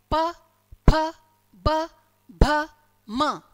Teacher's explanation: ओष्ठ्य यानी कि जब हम अपने दोनों होठों को परस्पर मिलाते हैं और मिलाकर जब अलग करते हैं तो ध्वनि निकलेगी। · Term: ओष्ठ्य वर्ण